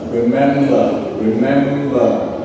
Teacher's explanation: So the intonation is uh falling in the end.